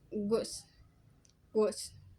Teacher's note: British English, pronounced as a close back rounded vowel